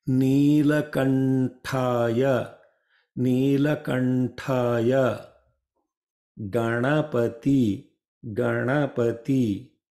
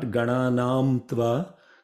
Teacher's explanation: When M meets with t, th, d, dh, then that M sound will translate into na.